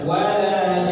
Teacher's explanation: Karena nunnya Tasdid. kita mau wakafkan, maka dengungkan dia 2 harokat. Walajan 1 2 3.